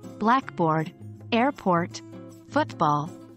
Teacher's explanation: the first part of the word is usually stressed